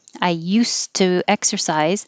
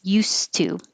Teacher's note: And if it's something in the past you used to do, I used to exercise, it will sound like an S, used to. You won't hear any D at all.